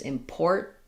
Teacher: They use a D there or a flap there. I tend to use important, where that vowel is pretty much gone. So an unreleased T, important, and then just another T with another syllabic N with an unreleased T, important.